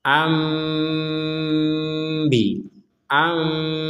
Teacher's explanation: seakan-akan akan mengucapkan huruf mim. Tapi ternyata setelah itu kita mengucapkan huruf ba bukan huruf mim.